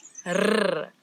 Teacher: This word it doesn't have the ch that we've been talking about, but now we've got a new sound in Afrikaans that a lot of people in different languages struggle with a little bit, and it's the rrr, as if your tongue is jumping up and down in your mouth